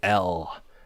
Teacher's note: That consonant, the dark L, is a velar consonant, so it's made in the throat.